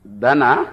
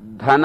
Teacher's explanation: ದನ ಧನ ಅಲ್ಲ, ಆಕಳನ್ನು ಕರಿತೇವಲ್ಲ ಅದೇ ದನ. ಅಲ್ಪ ಪ್ರಾಣ ಸಾಕು.